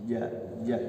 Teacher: Kemudian jim itu jahar, ya juga jahar, tidak ada anginnya.